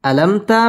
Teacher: বি আইন আলিফ জবর আল দুই জের দিন আলামু আলাম আলামতা মিম সাকিন ইজহারে খাস গুন্না ছাড়া পড়তে হবে